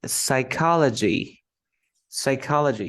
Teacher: When you have the PS, you don't pronounce the P. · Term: the silent P